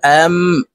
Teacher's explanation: নুন সাকিনের পরে ইকলাবের হরফ বা আসার কারণে এই ছোট্ট মিম দ্বারা পরিবর্তন করিয়া গুন্নার সহিত পড়ব